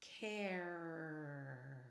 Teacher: I really hang a little too much on the R consonant